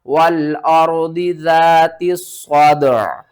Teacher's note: صاد دال زبر صاد عین زیر ای، صادعی، اور واقف کی صورت میں عین کے نیچے جو زیر ہے اس کو بھی آپ نے ختم کر دینا ہے۔ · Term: وقف